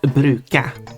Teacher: the word brukade, the second word, can commonly be pronounced bruka. You're skipping the last syllable.